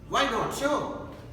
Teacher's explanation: Then there comes another segment, that is fourth tone unit, you can say in speaking English, rising, falling tone. This comes to the situation like enthusiastic agreement.